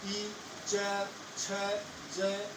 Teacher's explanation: जीभ दांतों से थोड़ा सा ऊपर जो खरदरे जगह है, मुख के अंदर तो खरदरी जगह है जिसको कठोर तालु कहते हैं, वहां पर टच करती है, स्पर्श कर रही है और वहां पर वायु स्पर्श करके बाहर निकल रही है और इन वर्णों का उच्चारण होता है।